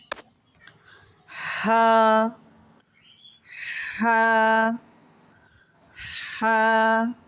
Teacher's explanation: Now we are talking about letter ha. Ha, the sounds come from middle part of the throat